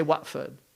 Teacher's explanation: England it's actually Watford right but they say Watford why because they don't pronounce the T